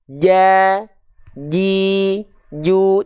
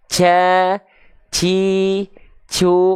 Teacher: Jim punya sifat namanya adalah jahr jahr itu artinya tertahan nafasnya